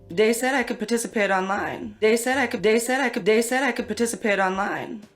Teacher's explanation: TH stopping, so that might be using something like a D sound for where you see a written TH, so dat for that.